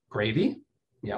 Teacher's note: And when that happened, the native English-speaking British people would say, gravy, yeah, with that rising intonation, which of course we understand means, would you like gravy? Yes or no?